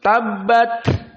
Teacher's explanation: Bukan suara tetapi nafasnya bocor. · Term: hams